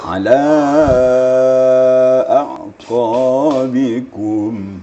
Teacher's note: Kemudian alanya panjang sedikit lagi kerana itu adalah mad jaiz munfasil ya, jaiz munfasil.